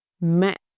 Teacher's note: This one is simple, very short and very low. It's like you're dropping your voice.